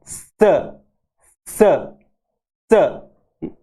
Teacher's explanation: हमारी जुबान है वो मसूड़ों के, दांत के जस्ट ऊपर जो जड़ है, मसूड़ है, वहां पे जाके लगती है और ऐसे आवाज आती है स स स।